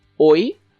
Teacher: if you say it with this intonation of a question, that means sorry?